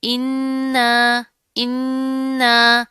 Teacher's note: اب یہاں پر کیا ہے، حمزہ کے نیچے زیر آ رہی ہے، آگے پھر نون ہے، اوپر تشدید ہے، مضبوطی سے جما کر پڑھیں گے، غنہ کریں گے، اور اس حمزہ کو اس نون کے ساتھ ملا دیں گے، ٹھیک ہے.